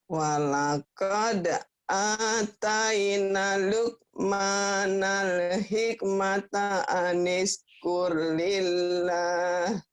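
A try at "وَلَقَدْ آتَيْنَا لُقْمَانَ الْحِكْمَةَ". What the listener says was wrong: Walaqad ataina, panjang ya Bu ya. Walaqad ataina Luqmanal hikmata anishkur lillah. Tanya panjang. Walaqad ataina.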